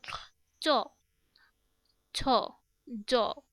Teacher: যার জীব প্রসারিত হয়ে সামনের অংশ শক্ত তালু স্পর্শ করে উচ্চারিত ধ্বনিগুলো হচ্ছে তালব্য ধ্বনি।